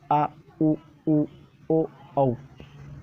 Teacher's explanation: ये है आपको पश्चिम स्वर, जो पीछे से इनकी ध्वनि आती है बोलते वक्त